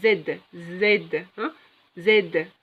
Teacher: Il y a une vibration. Les cordes vocales vibrent en prononçant le son Z.